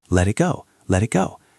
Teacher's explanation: Notice how the t and let sounds almost like a soft d because it is between two vowels